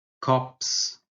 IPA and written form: kʌps (cups)